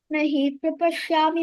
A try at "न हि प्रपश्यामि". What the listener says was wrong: don't say nahi prapashyami. Say na hip prapashyami, hip prapa. That's called dvitva.